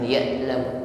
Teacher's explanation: alirkan bunyi ain sukun ya, jangan tertahan.